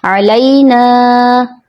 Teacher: یہاں جو عموماً مسٹیک ہوتی ہے، حرف لین کو حرف مدہ بنا دیا جاتا ہے، کھینچ دیا جاتا ہے، جیسے علینا، جو کہ غلط ادائیگی ہے.